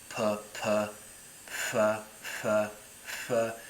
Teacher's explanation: sounds like a f but with two lips · Sounds like an F, but with 2 lips. With a normal F, we're doing like a f, f versus f, f. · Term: fricative